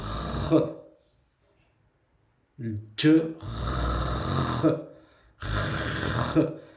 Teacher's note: On a la base de la langue avec le palais. Fond de la gorge, fond du palais un peu.